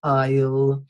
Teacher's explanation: aisle is pronounced without the S